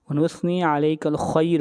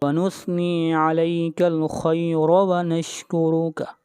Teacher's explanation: ہوگا، اگر ملا کر پڑھیں گے تو ونثنی علیک الخیر ونشکرک، اگر سٹاپ کریں گے تو را باریک ہوگی، اور اگر ملا کر پڑھیں گے تو را کو موٹا پڑھا جائے گا